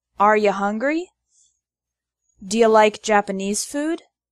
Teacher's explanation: the word you often becomes yah in informal spoken english